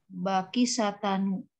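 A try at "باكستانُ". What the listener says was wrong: Bakis. Ini harusnya sinnya sukun ya. Ini salah tulis. Harusnya Bakistanu.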